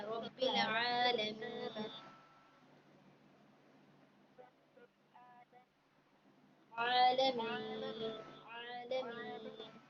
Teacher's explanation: عالمین میں آ کو کھینچنا ہے